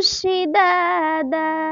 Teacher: ایک الف کے برابر کھینچ کر حرف مدہ کی طرح پڑھا جاتا ہے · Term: وقف بالعوض